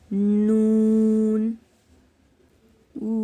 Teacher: नून जबान का किनारा जब ऊपर वाले दांतों के मसूड़ों से लगता है जब नून अदा होता है